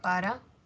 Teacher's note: para tiene el acento en pa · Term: grave